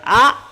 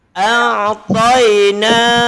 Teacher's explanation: Ain masuk kepada halqum bagian tengah.